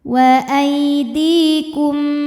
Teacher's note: Wa aidikum di mad thabi'i zhahiri, karena ada ya sukun didahului kasrah, maka huruf dal panjang dua harakat